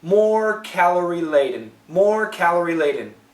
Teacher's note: I'm using the light L. That's between the teeth.